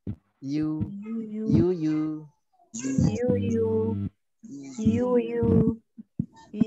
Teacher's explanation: Monyongnya yu, tidak membulat ya.